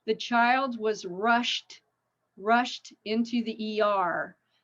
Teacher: shh, unvoiced. So that means the ED sounds like a T sound.